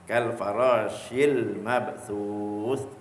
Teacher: Sa ni dikeluar di hujung lidah. Hujung lidah sama dengan zal